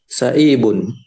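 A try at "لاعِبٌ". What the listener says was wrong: Huruf awalnya lam. La'ibun. Panjangkan la-nya. La'ibun.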